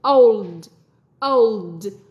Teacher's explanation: cong lưỡi và cái âm D phát âm rất nhẹ thôi